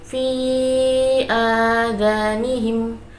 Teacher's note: Lalu lafaz fi adanihim yaitu bacaan mad jaiz munfasil sebab mad bertemu dengan hamzah di lain kalimat panjangnya 2,5 alif atau 5 harokat